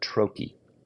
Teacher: It's stressed on the first syllable and unstressed on the second syllable.